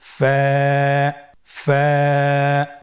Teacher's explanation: ফা, স্ক্রিনে দেখতে পাচ্ছেন ফায়ের মাখরাজ। ফায়ের মাখরাজ হলো নিচের ঠোঁটের প্যাড সামনের উপরের দুই দাঁতের আগার সঙ্গে লাগিয়ে উচ্চারিত হয়।